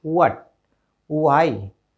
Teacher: अब डब्लू जैसे ही साउंड हम बोलेंगे, डब्लू वाला वर्ड की साउंड बोलेंगे तो उस हमारे लिप्स क्या हो जाएंगे, राउंड होने चाहिए